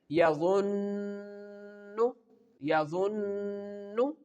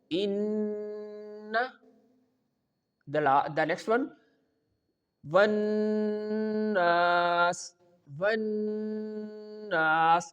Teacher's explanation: We have to hold the n sound at least for 2 counts in our nose, so our gunna will be correct.